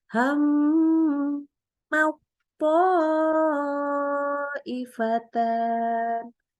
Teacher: di situ itu dengungnya harus panjang minimal 3 harokat